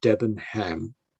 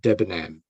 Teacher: So you don't pronounce the H.